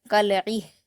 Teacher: یہاں پر کاف پر حرکت ہے، لام پر جزم ہے تو کاف کو لام سے ملا کر پڑھیں گے، عین پر زیر کی حرکت ہے اور آگے ہا پر جزم ہے تو عین کو ہا سے ملا کر پڑھیں گے اور ہا پر قلقلہ نہیں کریں گے